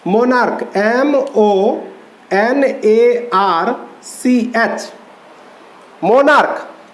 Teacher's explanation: इसका उच्चारण च की तरह न होकर क की तरह हो रहा है